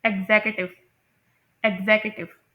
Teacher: third सेलेबल जो यू है उसकी साउंड प्रोड्यूस होती है आ sound, and it is pronounced as श्वा